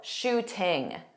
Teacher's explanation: Tom Holland is British, so he pronounced that T in the middle, shooting. That is not something that American speakers do.